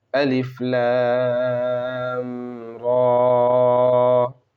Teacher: را پر کھڑا زبر ہے تو کھڑے زبر کو الف مدہ کے برابر یعنی ایک الف کے برابر کھینچیں گے، جیسے الف لام را۔